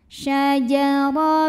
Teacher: Huruf ra dibunyikan secara tafkhim karena barisnya fathah, maka dibacanya ditebalkan.